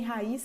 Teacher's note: O A vai para um lado, o I vai para o outro, por isso nós temos um hiato